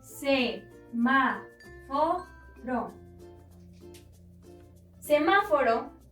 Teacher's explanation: podemos encontrar la sílaba tónica en ma, es decir, la antepenúltima sílaba, y debemos acentuarla siempre.